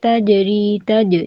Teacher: جیم پہ قلقلہ کریں گے